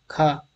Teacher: ख कंठ महाप्राण अघोष है